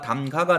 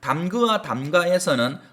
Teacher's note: 그러면 담그아 담가에서는 서로 다른 모음이 만나 으하고 뒤에 모음 아가 왔죠. 서로 다른 모음이 만나 모음 하나가 탈락하는 현상 으가 탈락했죠